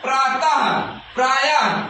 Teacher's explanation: विसर्ग का उच्चारण ह की तरह होता है।